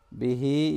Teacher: फमस्तमतअतुम बिही, बिही, यहाँ हा के नीचे खड़ी ज़ेर है, इसको थोड़ा सा लॉन्ग करना है